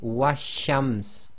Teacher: Now with a sun letter with a word before it, essentially here we've got the wow with the fatha, so wa again, and because it's a sun letter the sheen has taken a shadda, so the shadda must be joined to a sound before it. So we're going to skip the lam completely, and the giveaway here is there is no sukoon on the lam, so we're going to say washams.